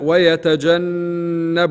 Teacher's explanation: النون المشددة إبراز الغنة فيها